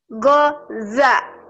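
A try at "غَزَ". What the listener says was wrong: Gha. Gha. Gha. Gha. Gha-za. Gha. Gha. Gha gitu ya. Jangan go. Go, kalau go itu guru. Tengah-tengahnya g, ya. Jadi go, go. Kalau kita bilang guru pakai g, nah itu tengah-tengahnya pecah sedikit di dalam. Go, guru, gitu ya, seperti itu.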